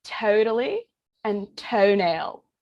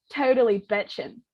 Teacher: where you've got two vowel sounds that slide into one another to represent like one phoneme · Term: california vowel shift